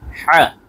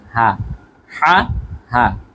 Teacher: কিন্তু পার্থক্য রয়েছে দেখাচ্ছি তা ত তা তপর এটা হচ্ছে হা এটি বলতে হবে গলার ভেতর থেকে প্রথমটি হা পরেরটি হচ্ছে নরমালি হা